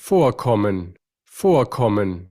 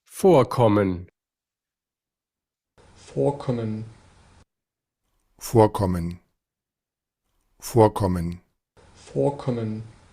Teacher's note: esta R se cambia por una A media